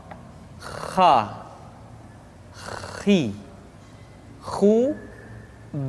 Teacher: dikeluarkan dari pangkal tenggorokan di pangkal tenggorokan diucapkan dengan mengalir nafas